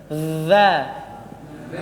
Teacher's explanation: lidahnya dikeluarkan sedikit baru bergesekan dengan Gigi atas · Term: huruf dza